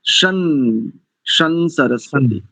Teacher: भवंतु के बाद जो शकार के ऊपर अनुस्वार है ना, उसको मकार उच्चारण नहीं करेंगे